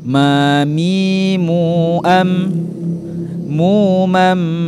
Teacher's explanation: Cara penyebutan huruf mim sama dengan penyebutan huruf ba, yaitu merapatkan kedua bibir kita